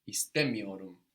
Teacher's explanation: The accent that comes on the syllable before that negative me or ma is actually what alerts your ear to the fact that we are in the negative, much more than that little m, which is such a small thing to be heard.